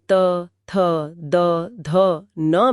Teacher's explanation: जबकि दंत्य ध्वनियां जैसे त थ द ध न में जीभ दांतों के ठीक पीछे लगती है।